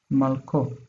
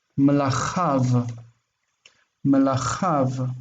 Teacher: That vav ending is for him, but the pronunciation of it is sometimes as o and sometimes as av.